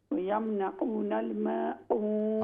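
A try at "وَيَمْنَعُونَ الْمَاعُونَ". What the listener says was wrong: आइन वयमनऊनल माऊन ये कोशिश करें आइन को दुरुस्त करें। यमनऊ ये हमज़ा की आवाज़ आती है तो लफ्ज़ बदल जाता है। वयमनऊनल माऊन वयमनऊनल माऊन।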